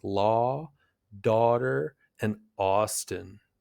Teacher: This is a long open vowel made toward the back of your mouth. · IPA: /ɔ/